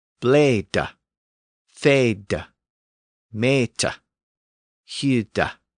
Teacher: All of those initial syllables were left open, so the vowel remained long. That gave us bleed, feed, meet, and hide, all with long vowels.